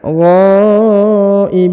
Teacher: huruf gha dipanjangkan 5 harokat ya, perhatikan karena di atasnya terdapat tanda garis panjang 5 harokat, yang ini ya, maka dipanjangkan 5 harokat.